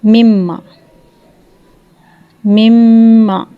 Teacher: میم دونوں ہونٹوں کے ملنے سے ملائیں گے اور ہونٹوں کے خشک حصے سے میم ادا ہوگا